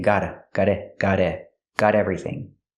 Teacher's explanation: you can change the T to a fast D because it's between vowels.